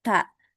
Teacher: huruf ta itu dia punya sifat hames. Jadi dia mengeluarkan angin ya ta. Tapi jangan terlalu berlebihan juga keluar anginnya ya.